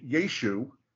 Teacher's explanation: it would have been never pronounced with the ah on the end